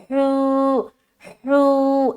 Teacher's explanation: वाव साकिन उससे पहले पेश, सीने से बिल्कुल निकालेंगे, हा वाव पेश, हू, हू ऐसा। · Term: वाव मद्दा